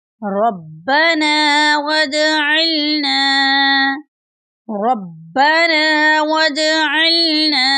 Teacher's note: بی پر شدّہ ہے ، ہم اس کا تلفظ مضبوطی سے کریں گے